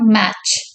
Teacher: Okay, voiceless post அல்வெலார் அஃப்ரிகேட் அப்படின்னு இதை சொல்றோம்.